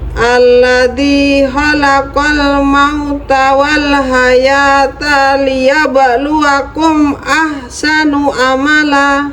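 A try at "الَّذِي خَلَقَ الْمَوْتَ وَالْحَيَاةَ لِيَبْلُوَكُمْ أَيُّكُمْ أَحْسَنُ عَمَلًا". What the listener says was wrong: Cuman kurang satu kata. Ayyukum itu saja.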